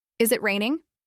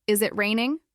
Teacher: Try saying it out loud first in a flat tone, then again lifting your voice softly at the end like a gentle tune